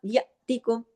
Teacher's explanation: تو وہ الف جو حمزہ الف ہو گیا تو جھٹکے سے پڑھا جاتا ہے نا حمزہ، تو یہاں یاتیکم اس طرح جھٹکے سے پڑھا جائے گا.